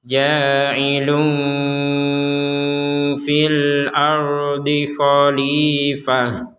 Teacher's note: tanwin atau domatain bertemu dengan fa maka kita samarkan ada unsur dengungnya dan kita dengungkan kurang lebih dua harakat atau dua ketukan tapi bukan dengung 100% unsur dengung ada unsur dengung artinya nya ini samar.